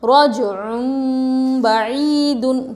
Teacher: تنوین کے بعد با آ رہا ہے، نون کو میم سے بدل کر غنہ اور اخفا کے ساتھ پڑھیں گے